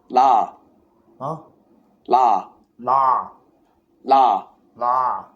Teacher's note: The tongue is not making an R sound, nor is it making an L sound. It's actually in the position of D that we would say in English.